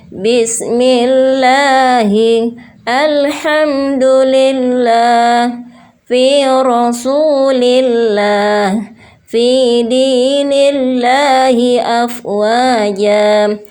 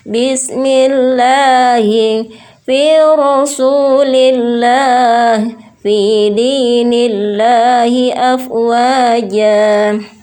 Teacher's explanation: terdapat lafzul jalalah yang sebelumnya berharokat kasroh. Jadi ketiga contoh tersebut harus dibaca dengan tipis. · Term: lam tarqiq